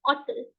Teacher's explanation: I eliminate the H sound. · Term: mute